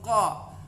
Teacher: Bukan ko tapi qa. Ini huruf qa itu di aqsal lisan, pangkal lisan, bagian atas sedikit.